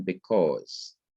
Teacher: i say because so fast that you can hardly even hear the e in the word